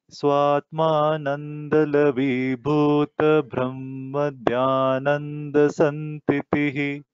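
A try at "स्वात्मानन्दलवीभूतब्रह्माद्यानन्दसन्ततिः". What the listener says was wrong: You should not say Bhuta, no Dhirga. Bhuta Brahma, immediately you have to take. Swatmananda Lavibhuta Brahma Dhyananda Santatihi. And we should not take a pause after Bhuta. It is one Bhuta, name.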